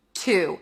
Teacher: It's a T sound, then the long oo sound.